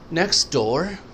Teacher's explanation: T اکثر silent ہو جاتی ہے because of the next sound